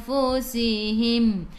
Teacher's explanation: Mim ada sukun, jelaskan mim. Bila berhenti tutup mulut, rapatkan bibir.